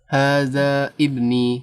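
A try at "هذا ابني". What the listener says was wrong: Hamzah wasol ya. Sehingga ketika di tengah dia dilewati. Hadza bni. Ulangi.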